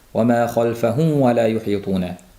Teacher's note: Mana shu yerda sukunli mim o'zidan keyin mana vav harfi kelmoqda. Mim bilan vovning mahraji bitta, ikkalasi ham labdan chiqadi. Mahraji bir bo'lganligi uchun bu mimni to'la aytmasdan vovga labimiz o'tib ketish holati uchrab turadi.